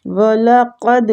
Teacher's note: قاف مستعلیہ دال پہ کلکلا کریں گے